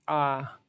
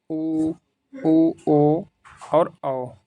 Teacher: जिन स्वरों के उच्चारण में जिह्वा का पिछला भाग उत्थापित होता है उन्हें पश्च स्वर कहते हैं